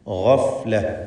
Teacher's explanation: ഗൈന് പൂർണ്ണമായ തഫ്ഖീം കൊടുത്ത് ഉച്ചരിക്കുക.